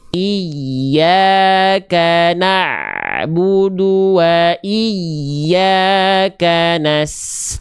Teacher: pastikan ain sukun sedikit mengalir, tidak terputus.